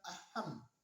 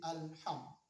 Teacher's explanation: Tidak mengatakan aham, tapi alham, jelas suara alif lam atau lam yang mati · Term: alif lam qamariyah